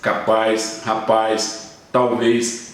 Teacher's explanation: O Z se tornou IS